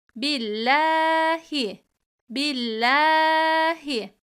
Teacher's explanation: Allah lafzından önceki harfimiz esreli ise ince okunur